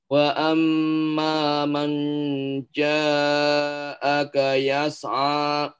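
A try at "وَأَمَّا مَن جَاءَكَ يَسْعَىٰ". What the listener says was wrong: Baik, untuk ikhfa itu jangan langsung di apa ya? Kasih kasih masafah, kasih jarak dia. Jangan langsung mang gitu ya, tapi ma wa amma ma tidak mang tidak langsung gitu ya. mang gitu, enggak seperti itu.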